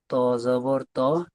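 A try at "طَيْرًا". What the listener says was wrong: ত জবর ত নয়। হয় না, ত ইয়া যাবার তই হয়, তই। ত যাবার ত, ত ইয়া যাবার তই, তই।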